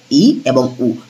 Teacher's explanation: যে সকল স্বরধ্বনিগুলো উচ্চারণ করার সময় আমাদের মুখের ফাকটা সবচেয়ে কম থাকে সেটা হচ্ছে সমবৃত। অর্থাৎ ই এবং উ সবথেকে উপরের এই ঝকটা সবথেকে উপরের যে দুটো সেটা হচ্ছে সংবৃত।